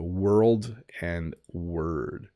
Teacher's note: it's hard to roll the R into the L into the D with world